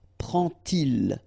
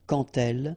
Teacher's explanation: you won't pronounce it like d to make the liaison, but you will pronounce it like t